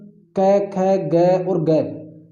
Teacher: इनकी बात करें तो इनको कंठ से बोला जाता है।